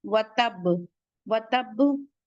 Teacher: कलकला आप लोगों को बताया जा चुका है कि सख्ती से पढ़ते हैं, हल्का सा झटके से पढ़ते हैं, एक बाउंसी साउंड होता है कि हमारा माउथ प्रेशर से बंद होगा, ओपन हो जाएगा। वतब और कलकले अकबर यानी हैवीएस्ट कलकला होगा।